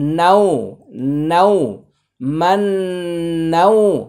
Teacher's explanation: অনেকে ঠোঁট লাগিয়ে লাগিয়ে কাছাকাছি রেখে রেখে গুন্না করেন। মনে রাখতে হবে নুনের গুন্না মুখ ফাঁকা, না হয় এটা মিমে পরিণত হয়ে যাবে।